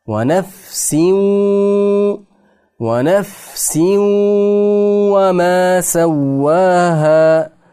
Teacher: Sin harfini ostidagi tanvinda vav harfni ichiga kirgizib o'qiymiz. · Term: idg'om